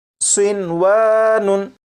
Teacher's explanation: होना तो ये चाहिए था कि नून साकिन को वाव में इदगाम करते, लेकिन नून साकिन और वाव क्योंकि एक लफ्ज़ में इकट्ठे हैं इसलिए यहाँ पर इदगाम नहीं करेंगे